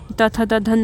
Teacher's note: उसके बाद दंत आता है जिसमें कि त थ द ध न, ये आपके दांतों को टच करती है जीभ इसमें